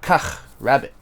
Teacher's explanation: because there's not two A's, I do not drag that sound